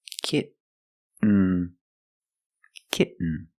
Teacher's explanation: you don't release and then you fall to an N kit when you make the stop T the tongue is up almost in the end position so you don't have to change much